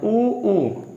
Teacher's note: ऊ, तो देखो जब हम छोटा ऊ, बड़ा ऊ बोल रहे हैं, ऊ, तो हमारे ओंठ पर प्रभाव पड़ रहा है। तो ये ध्वनि निकालने के लिए मुझे ओंठ का उपयोग करना पड़ा, इसलिए इन्हें ओष्ठांग या ओष्ठ बोलते हैं।